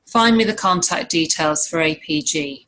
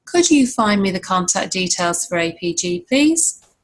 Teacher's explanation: we're rising at the end because they're asking a question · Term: full rise